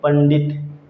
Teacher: जब हम बोलेंगे पंडित, तो अण की ध्वनि अपने आप निकल कर आएगी पंडित। ठीक है दोस्तों, क्योंकि इससे अनुस्वार से अगला वर्ण हमारा जो है वह है ट वर्ग का है, ड, तो उसका पंचम वर्ण खुद ब खुद बन जाएगा और अनुस्वार के चिन्ह पर चला जाएगा।